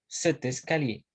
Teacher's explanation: on fait la liaison entre l'adjectif démonstratif et les noms qui suivent